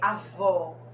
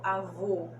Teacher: o acento agudo ou som mais aberto é a vó e o acento circunflexo é um som mais fechado avô